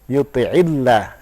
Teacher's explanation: Ketika lafzul jalalah berharokat kasrah, maka membacanya lebih dipertipis.